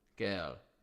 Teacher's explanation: Words like girl and hurl, etc., are pronounced as one syllable with silent R